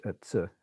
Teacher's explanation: So it's equivalent to a ts. So it's a dental affricate.